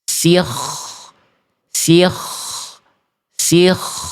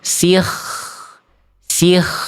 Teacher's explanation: Salahnya karena kho sukunnya dibaca terlalu tebal.